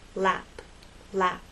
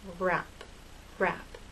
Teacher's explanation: But with R, your lips are more rounded and a little more tense.